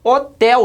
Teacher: O tel é mais forte. Percebe que é a última? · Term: oxítona